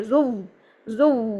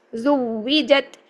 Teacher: یہ تو واو شد والا ہے، مدہ والا تو بنانا ہی نہیں ہے